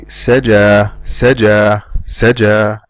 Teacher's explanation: the air fades out until the sound of an alif is gone.